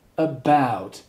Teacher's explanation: the schwa sound, and then you have what we call a diphthong, ow, ow, so you say about, there are two syllables, about, and the stress, the power is on the second syllable, so you say about.